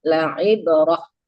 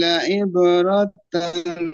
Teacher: kalau mau berhenti Pak ya itu ta marbutah dimatikan ya